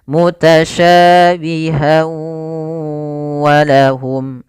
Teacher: Idgham disertai dengan gunnah, maka masukkan tanwin pada huruf ha, masuk kepada huruf waw dan ditahan suara wawnya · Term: idgham bi gunnah